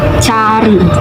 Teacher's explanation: vokal yang dibentuk dengan lidah dalam posisi serendah mungkin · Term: struktur terbuka